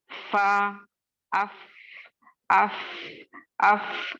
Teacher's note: फा बारीक है और यहाँ पे आपको साकिन आ रहा है तो इसको हम्स करते हुए पढ़ेंगे। · हम्स का लेटर है, सांस जारी होगी, ये भूलना नहीं है हमें, ठीक है? और फा जो है लाइट लेटर है, लेकिन यहाँ पे साकिन होने की लेटर है तो अल्हम्दुलिल्लाह इसको उसी तरीके से अदा करेंगे।